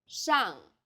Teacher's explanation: The pronunciation for the famous city Shanghai is 上海， the first syllable here is made of an initial 诗， and a final 昂， and a fourth falling tone